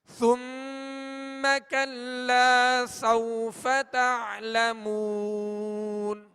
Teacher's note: سوفا یہاں واو لین ہے، لہذا نرمی کے ساتھ ادا کریں گے